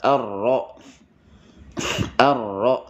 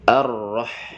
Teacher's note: kemudian rnya dibaca dengan tebal arro arro dibaca dengan tebal arrah kemudian ha dibaca dengan wasul